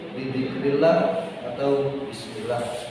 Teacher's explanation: lam yang dibaca tarkik atau tipis. Dibaca tipis dalam berharokat kasroh, contoh bidzikrillah atau bismillah.